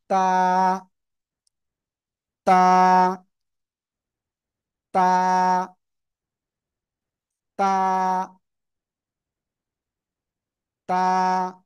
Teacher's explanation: জিব্বার আগা, সামনের উপরের, দুই দাঁতের গোড়ার সাথে লাগিয়ে এক আলিফটা নিয়ে তা উচ্চারিত হয়।